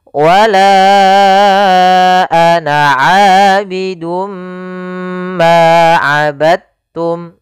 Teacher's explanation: maka diidghamkan dalnya kepada huruf ta sehingga dibaca dengan huruf ta-nya langsung